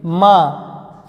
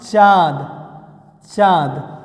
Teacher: जैसे हम लिख दें माँ, माँ आप बोल के देख सकते हैं, माँ बोल के देखिए, नाक के साथ मुख से भी ध्वनियाँ निकलेगी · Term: अनुनासिक स्वर